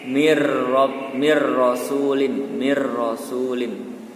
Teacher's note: Nun sukun bertemu dengan ro, maka dibaca idgham bila gunnah, yaitu idgham yang tidak didengungkan tapi masuk ke dalam huruf berikutnya. Jadi huruf nunnya tidak dibaca, langsung masuk ke huruf ro.